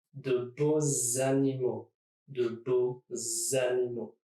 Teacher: So the X becomes a Z sound, Z, and goes to the beginning of animaux